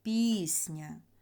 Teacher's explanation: у слові пісня звук і наголошений пісня А звук а ненаголошений пісня Да пісня Ми чуємо що